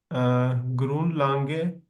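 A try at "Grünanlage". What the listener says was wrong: ग्रून अन लागे, ए भी है बीच में, ग्रून के बाद ए आता है। ग्रून अन लागे, लांगे नहीं, अन लागे, अन लागे कहते हैं एरिया, एरिया भी हो सकता है,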